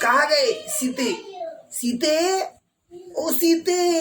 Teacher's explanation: जो खींच के जो बोला गया, जो लंबा समय लग रहा है, तो हो गया प्लूत स्वर